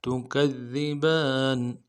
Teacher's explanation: کاف کو دال کے ساتھ ملانا ہے، دال کے اوپر تشدید زور دیں گے، اگلے دال کو باریک ادا کرنا ہے